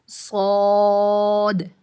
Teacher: زبان کی نوک اور اوپر نیچے کے دونوں دانت، یہاں سے صاد ادا ہوتا ہے